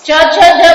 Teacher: ચ જ બોલીએ ત્યારે તાલુમાં સ્પર્શ થાય